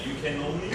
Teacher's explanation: the can and the only are pushed together.